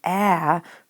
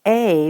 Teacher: changing that vowel sound from the short vowel sound ah to the long vowel sound eh because this bossy E is telling us to do that so